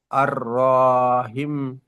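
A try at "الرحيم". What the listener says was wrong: র টান হয়ে যাচ্ছে, আর রহিম।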